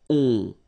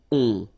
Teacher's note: it's a nasal and it goes in your nose and it goes like on. All right, so you don't hear any N, so it's really on.